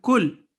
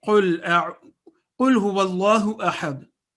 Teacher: Kaf is a thin letter. Qaf, on the other hand, is a thick letter.